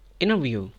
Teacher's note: skip the T sound and say inner view